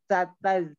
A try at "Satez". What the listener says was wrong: Itu masih belum keluar ya? Coba lagi.